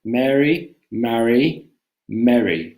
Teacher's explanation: my american accent we don't make a distinction between mary mary and mary